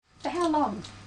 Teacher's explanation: This is a question too, but it has a falling tone. A falling tone is used with information questions.